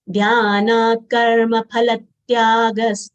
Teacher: Dhya is made up of half dha and full ya having long a sound. Dha being Mahapran letter, we should exhale by saying dha. Dhyana, na long sound, followed by half the full ka.